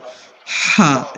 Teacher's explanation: ہم نے کہا تھا حلق کے درمیان سے ہا ادا ہوگا، ہا، جیم والا ہا، ٹھیک ہے.